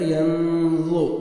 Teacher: افلا, الف مدہ, لام کو آپ نے 1 سیکنڈ کھینچنے. افلا نون ساکن کے بعد حروف اخفاء میں سے ضا آ رہا ہے, یہاں پہ نوز میں ساؤنڈ لے کے جائیں گے · ضا پڑھیں گے, ضا کو موٹا کر کے ہیوی ساؤنڈ آئے گا. ین ضو, ین زو نہیں پڑھنا, زا نہیں پڑھنا, نہ ہی آپ نے ذال پڑھنا ہے.